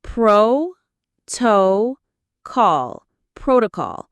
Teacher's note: Stress on the first syllable, protocol.